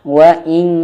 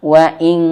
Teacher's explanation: Di pangkal lidah tersentuh kepada langit-langit atas. Maka ketika nun sukun persiapan ke huruf kaf, maka bunyinya menjadi eng ya. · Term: bunyi eng